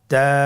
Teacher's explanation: তায়ের মাখরাজ কোন জায়গা থেকে? জিহ্বার আগা সামনের উপরের 2 দাঁতের গোড়ার সঙ্গে লাগিয়ে উচ্চারিত হয়।